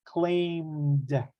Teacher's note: When we pronounce that M, there's a vibration, right?